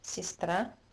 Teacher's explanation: pronounce this word the Russian way with stress a, and that makes unstressed e pronounced as и.